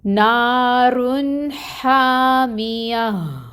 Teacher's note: تو نا کو 2 حرکت لمبا کریں گے۔ یہاں پہ الف مد کا رول ہو رہا ہے۔